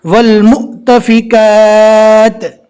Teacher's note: جزم والا حمزہ آ گیا، اور یہ حمزہ جو ہے وہ واو کی شکل میں ہے، اس کے اوپر جزم ہے، تو پہلے والے حرف سے ملا کر جھٹکا دے کر پڑھیں گے